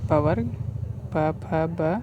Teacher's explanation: ये जो होता है प वर्ग होता है, ओष्ठ से बोले जाने वाला।